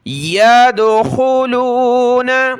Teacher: دال پر قلقلہ کریں گے، یا دال زبر ید، یدخلون۔